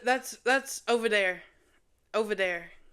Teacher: I say instead of there, it's dare.